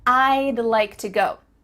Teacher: we're cutting off all the sounds in the word would except for that final D